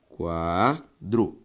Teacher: a sílaba tônica de quadro qua